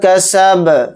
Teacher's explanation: کسب، با کو ساکن کر کے پڑھیں گے، یہاں پر آیت بھی ہو رہی ہے اور با یہاں پر ساکن ہوگا تو اس میں قلقلہ بھی کریں گے با کے اندر۔ کس طرح سے پڑھیں گے؟